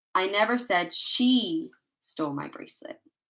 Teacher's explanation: the stress is placed on the word she in this sentence.